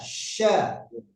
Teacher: shinnya kurang tebal di tengah-tengah lidah